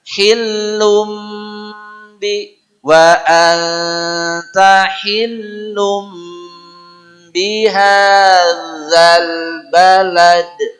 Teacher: Ini mestinya baca hillun. Berhubung ini ba jadi lun jadi lum. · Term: gunnah